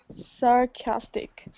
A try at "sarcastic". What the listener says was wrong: Perfect. Absolutely perfect. The little apostrophe is in front of the K, and that shows you that that syllable is the stress.